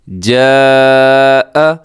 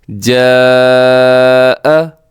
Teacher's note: یہاں پر جو مد ہو رہی ہے اس کو مد متصل کہا جاتا ہے، یعنی اس کو مد واجب بھی کہتے ہیں، اور حروف مدہ ہے اس میں الف، اور دوسرا کیا ہے کہ حمزہ ہے اور اسی کلمے کے اندر ہے تو یہاں پر بڑی مد ہے